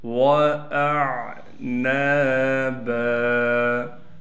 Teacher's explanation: وَأَعْنَابًا، حمزہ کو عین سے ملائیں گے، نون کے بعد الف ہونے کی وجہ سے نون کو ایک الف کی مقدار کھینچیں گے، با پر بھی جب وقف کریں گے تو با کو بھی ایک الف کی مقدار کھینچیں گے